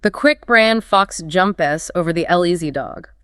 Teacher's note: The function words the over the get minimized squeezed in between those stress beats. You can almost make it sound musical if you follow that rhythm.